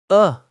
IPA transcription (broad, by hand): ʌ